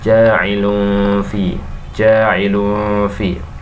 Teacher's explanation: dengan cara bacaannya berdengung, samar-samar dan ditahan 2 harokat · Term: ikhfa